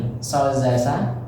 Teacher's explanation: Jadi di ujung lidah bertemu dengan gigi seri bagian bawah keluar 3 huruf so, za, sa.